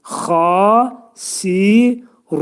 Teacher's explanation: xa hərfinin məxrəci boğazın yuxarısındadır